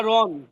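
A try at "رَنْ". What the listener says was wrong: রন টান দিলেন কেন রন তো টান নাই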